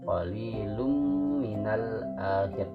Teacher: Jadi langsung dimasukkan ke huruf mim. Nah, ditahan dengan setengah ketukan mimnya. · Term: idgham